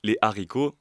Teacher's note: Les haricots, là, on voit que du coup, la liaison a été coupée.